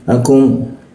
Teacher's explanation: huruf ku di siku tenggorokan, lidahnya kita turunkan sehingga rongga udara terbuka dan ada hembusan udaranya